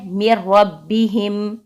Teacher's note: میم کو را کے ساتھ ملا دیں گے، ادغام کر دیں گے